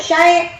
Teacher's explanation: Jadi itu tuh ai itu adalah lin. Jadi a dengan y tapi ai cepat gitu bacanya tuh. Lin itu lunak lembut.